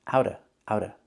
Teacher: We don't have to pronounce the V sound in of.